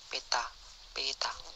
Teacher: Konsonan T, bunyi apikoalveolar hambat tak bersuara